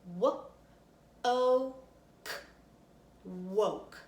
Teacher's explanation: gonna stretch out each sound that we hear ready what-o woke when I'm just stretching it out slowly I can hear myself saying oh in the middle and that is a long vowel sounds